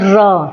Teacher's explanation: लुंठित व्यंजन हमारा है लुंठित, लुंठित व्यंजन है हमारा र, और र को लुंठित व्यंजन इसलिए बोला जाता है क्योंकि जब हम र को उच्चारण करते हैं, जब हम र को बोलते हैं तो जो हमारी जीभ है वो बेलन की तरह लपेट कर बोलती है, जैसे र। ठीक है, जो सारी की सारी जो जीभ है वो बेलन की तरह जो है बेलनाकार बना लेती है, इसलिए र को जो है लुंठित व्यंजन भी कहते हैं।